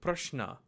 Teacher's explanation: the palate sha and dental na, shna, is a softer sound, and it's used in words like prashna